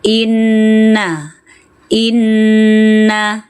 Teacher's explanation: Ghunnah musyaddadah, ghunnah yang wajib . Wajib bersenandung ketika ada seorang Nun yang sedang bersyaddah. · Inna bersenandunglah selama dua ketukan.